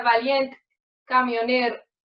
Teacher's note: las vocales átonas finales de palabra que suelen ensordecerse. Por ejemplo, en la palabra valiente o camionero sería valiente, camionero y se ensorde totalmente las vocales finales.